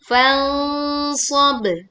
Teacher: Mendengungkan dengan suara yang tebal saat kita membaca nun sukun bertemu dengan shad